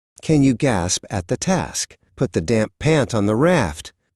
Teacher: Watch how the vowel stays short even when two consonants follow it at the end. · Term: short A